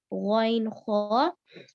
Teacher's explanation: ان دونوں کو منہ کی طرف والے حصے سے نکالیں گے جو ہے ادنی الحلق